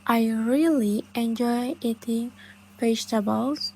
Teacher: the words really, enjoy, vegetables are usually stressed because they are important